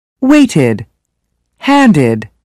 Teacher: Add an extra syllable, id, to verbs that end with t and d. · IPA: /ɪd/